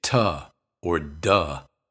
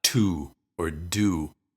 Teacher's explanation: when it's unstressed it's usually pronounced with uh instead of U